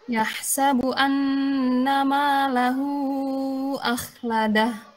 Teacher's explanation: huruf kha itu ketika disukunkan dia tetap terdengar sifat istiqla'nya, tafkhimnya. Meskipun huruf sebelumnya tipis ya kan, misalnya biasanya kita terbawa huruf sebelumnya.